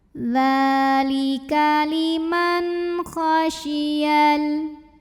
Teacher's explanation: nun sukunnya dibaca dengan izhar atau jelas, bunyi n-nya jelas, tidak perlu ditahan. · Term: izhar halqi